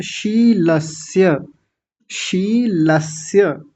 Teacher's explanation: शीलस्य, यहाँ विशेष ध्यान देंगे, कई लोगों ने बहुत अच्छा उच्चारण किया। पहला तालव्य सकार और दूसरा दंतीय सकार।